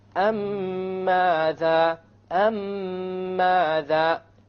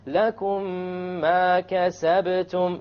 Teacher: You have a ghunna on the meme, and you will make the merging or the idgham, and there will, in the Quran it will be written with a shadda, so you will even know that there will be a merging here. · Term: idgham shafawi